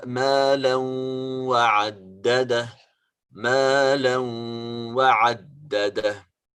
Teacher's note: There is this nasal sound that is accompanying the sound of الإدغام.